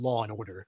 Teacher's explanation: some accents are a bit more Hiatus tolerant than others General American speakers are happy saying Law and Order